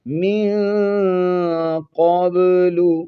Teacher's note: قاف کو موٹا پڑھیں گے اور با پر قلقلہ کریں گے